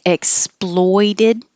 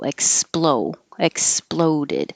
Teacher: exploited has the oi vowel oi and exploded has just the O